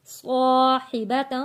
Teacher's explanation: صا موٹا پڑھے جانے والا لفظ ہے اور سیٹی والا لفظ ہے۔